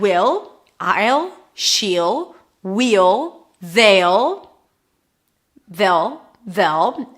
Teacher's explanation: the will becomes /'ll/, and then we add it to the pronoun, and then the pronoun can also reduce a bit